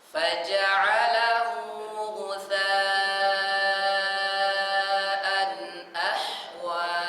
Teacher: di sini ha memiliki sifat rokhawa, berarti sama seperti huruf kha dengan huruf sin. Suara mengalir sempurna.